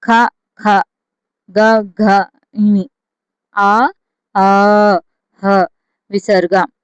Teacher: కంట్యాలు అంటే కంఠము నుండి పుట్టేవి కంట్యాలు. ఇవెన్నండి 9.